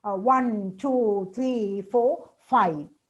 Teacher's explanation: The last one falling, all the others with rising. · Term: listing